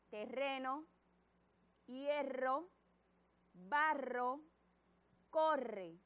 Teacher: cuando escuchamos este sonido bien fuerte aparece entre dos vocales y siempre son dos letras r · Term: sonido fuerte